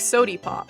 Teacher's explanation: word final ah sounds into E